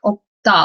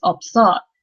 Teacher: like you don't really hear the S sound